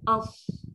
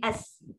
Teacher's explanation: Kalau untuk Sod, sama dia macam Sin. Cuma pangkal lidah tu kena naik. Nak jadikan dia tebal. As. Mulut tak perlu muncung.